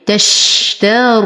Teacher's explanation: لدي صله صغرى تمد بمقدار حركتين ولا م الطبيعي حركتين تشتر نفخم الراء وبعدها واو ساكنه فهو مد طبيعي